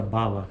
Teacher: é uma oclusiva bilabial vozeada